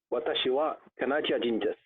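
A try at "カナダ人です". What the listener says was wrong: Yes, exactly. Canadajin desu. Good.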